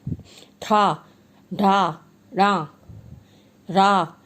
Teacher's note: मूर्धन्य जिन वर्णों का उच्चारण मूर्धा अर्थात मुख की छत से होता है वे मूर्धन्य कहलाते हैं। जैसे टा, इसमें पूरी जबान आपके ऊपर जाके टकराती है। ठा ढा रा रा, पूरी जबान जाके आपके ऊपर तालू में लगती है।